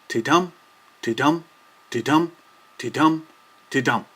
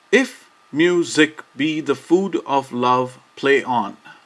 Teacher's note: Each ti and tum of a line is a syllable. Therefore, each line consists of 10 alternating unstressed and stressed syllables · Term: iambic pentameter